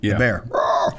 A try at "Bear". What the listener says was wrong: you sound like you said Baron.